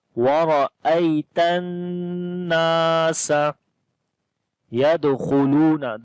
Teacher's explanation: خا کو موٹا پڑھیں گے، حروف استعلا میں سے ہے، حروف موٹے پڑھے جاتے ہیں۔ · تا کو نون کے ساتھ ملائیں گے، غنہ کریں گے · دال کے اوپر کلکلا کریں گے جو کہ کمزور کلکلا ہوگا، کیونکہ کلکلا والا حرف جو ہے وہ اس لفظ کے بیچ میں آ گیا، یدخلون پورا لفظ ہے، تو اس وجہ سے کمزور کلکلا ہوگا۔